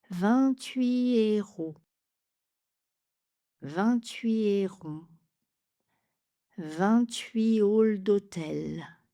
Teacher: Le T ne sera pas prononcé et on ne fait pas de liaison, mais on va faire un enchaînement avec les voyelles. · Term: H aspiré